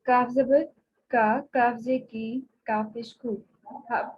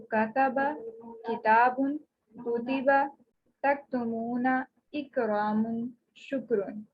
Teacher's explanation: काफ के मखरज से थोड़ा सा हट कर मुंह की तरफ जुबान के ऊपर का तालु, वहां से अदा होता है काफ। अक्सा लिसान का यानी काफ के मखरज से थोड़ा हट के ऊपर का तालु, यानी उसी के बिल मुकाबिल ऊपर का पोर्शन।